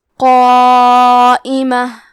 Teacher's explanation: کلمت قائمہ میں قاف ہے اور اس کے بعد مد الف ہے، تو ہمیں قاف کو اور مد الف کو دونوں کو تفخیم سے ادا کرنا ہے۔ قائمہ، کیونکہ یہ مد واجب متصل ہے تو ہم اپنی آواز 4 مد کے برابر لمبی کریں گے